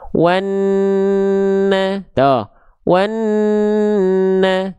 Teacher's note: ketika kita baca wanna, tahan dulu, jangan lepas langsung ke vokal A-nya, ya. Jangan langsung lepas ke vokal A-nya. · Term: gunnah